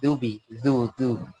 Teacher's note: জুবি না বলে বলতে হবে দুবি। দুবি পাতলা ভাবে দাল আছে।